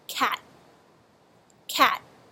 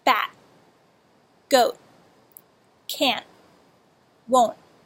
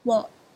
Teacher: you hold your tongue for an extra moment so that the puff of air is held in and not released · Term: held T